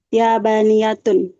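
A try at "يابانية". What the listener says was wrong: Bagus. Yabaniyatun.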